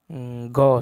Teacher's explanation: ग सघोष अल्पप्राण है।